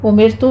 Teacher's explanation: امرتو میں را باریک ہے کیونکہ یہاں پہ را کا سبب ہے ہمارے پاس را ساکن، پیچھے کسرہ ہے